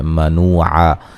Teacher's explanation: منوعا، نو و مدہ ہے، عا وقفاً دو زبر کو الف مدہ میں تبدیل کر دیں گے، ملانے کی صورت میں نون تنوین کا اظہار ہوگا، غنہ نہیں کریں گے۔